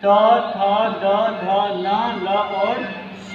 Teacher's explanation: ये जितने वर्ड है दंत से बोले जाते हैं